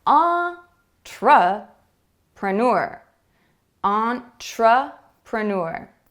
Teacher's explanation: did you hear the schwa sound it comes after the first stressed syllable